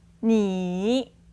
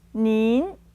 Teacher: a second tone for the more polite version and together with an N sound in the end